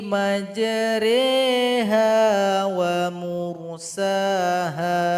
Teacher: Madinah dibawah huruf ro ada tanda ketupat kecil maka ini imala miringkan bunyi huruf roknya dan dipanjangkan dua harokat